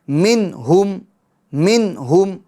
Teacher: نون ساکن میں کیا ہوگا؟ اظہار ہوگا، یعنی گناہ نہیں کریں گے